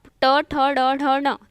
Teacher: ऊपर तालु टच हो रहा है, जीभ मुड़ के टच हो रहा है, इसलिए इसे मूर्धन्य व्यंजन कहते हैं।